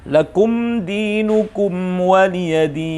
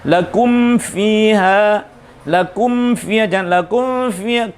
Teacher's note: jangan sampai saat membaca mim sukun bertemu dengan waw akhirnya tidak tertutup secukupnya sesuai dengan makhrajnya huruf mim